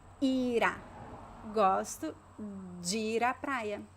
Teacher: And then we connect the verb ir with the preposition a, because we have a consonant R, the consonant R, when it connects with a vowel and the next word is a vowel, it starts with a vowel, we have to connect it.